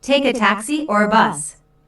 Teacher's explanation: taxi or a bus the word or Signal's a choice here notice the rising intonation on Taxi the first choice and falling intonation on bus the second choice